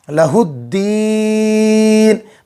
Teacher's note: الف اور لام کو نہیں پڑھیں گے · مد عارض ہو جائے گا وقف کریں گے تو، حرف مد کے بعد والے حرف پر وقف کرنے کی وجہ سے جزم آیا